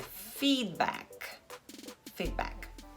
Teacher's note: D é muito sutilmente pronunciado, feed, e o K também. Então é feedback.